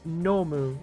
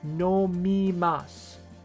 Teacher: The moo sound is becoming a mi sound.